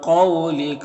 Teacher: قاف حروف مستعلیہ میں سے پر پڑھیں گے